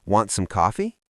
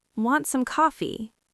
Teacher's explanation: The T in want kind of disappeared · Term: connected speech